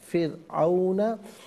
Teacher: यहाँ रा साकिन को बारीक पढ़ेंगे इसलिए कि इससे पहले फ़ा के नीचे ज़ेर है